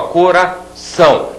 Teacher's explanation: a última sílaba é mais forte do que as outras eu digo que esta aqui é a sílaba tônica sílaba tônica